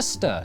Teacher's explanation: locals who were too busy to pronounce all the syllables in Cester reduced it to stir to save time